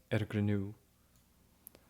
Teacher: the N is also dropped in between consonants